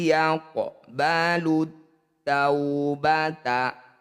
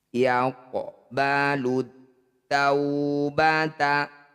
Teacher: Bunyi qaf pantulkan tapi jangan berlebihan. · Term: qalqalah sugro